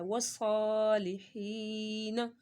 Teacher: مدہ ہو رہا ہے اور صاد کے اوپر کھڑا مدہ ہے صاد کی سیٹی بھی نکالنی ہے اور اس کو موٹا بھی پڑھنا ہے اور ایک الف کے برابر اس کو کھینچ کر بھی پڑھنا ہے